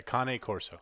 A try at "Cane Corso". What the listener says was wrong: No, there's no R in there. So it's Utah Cane Corso.